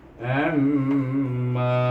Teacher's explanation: Kemudian dia ain ini pula bertemu dengan mim yang bertasydid, maka kita kena baca dengan wajibul gunnah.